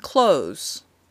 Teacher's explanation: Many of us do not make the TH sound for the noun close. It sounds just like close the door.